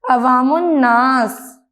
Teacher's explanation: Class, عوام الناس کا مطلب ہے عام لوگ، عوام الناس۔ لکھنے میں الف اور لام لکھا جاتا ہے، لیکن بولنے پر ان حروف کی ادائیگی نہیں ہوتی۔ لفظ پڑھا جاتا ہے عوام، پھر ناس، بن گیا عوام الناس۔